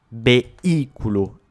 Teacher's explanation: Mais comme on a un hiatus avec le BI, on mettra l'accent tonique sur ce I